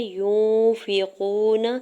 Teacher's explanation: یا کی پیش کو نون ساکن کے ساتھ ملاتے ہوئے اخفا کریں گے، یعنی آواز کو ناک میں چھپا کے پڑھیں گے